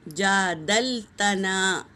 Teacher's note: جیم پر کھڑا زبر ہے تو ایک الف کے برابر کھینچیں گے اور دال کو لام میں ملائیں گے، اور یہ بھی دیکھو الف مدہ ہے۔